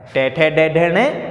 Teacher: ऊपर वाले दांतों के पीछे वाले मसूड़ों पे स्पर्श कर रहा है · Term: मूर्धा स्थान